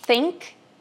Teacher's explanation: você vai assoprar sem nenhuma vibração, que é o não vozeado